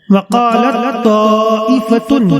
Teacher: تا اور تا دونوں متحد المخرج ہیں، یہاں بھی ادغام متجانسین کیا جائے گا